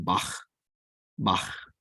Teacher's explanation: it is pronounced with a guttural sound that you can make in the back of your throat, very much like the more proper pronunciation of the German Bach.